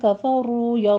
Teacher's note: آگے کفروا میں را مفخم پڑھی جائے گی اور واو مدہ ہے، 2 کاؤنٹ کیجئے ہونٹوں کو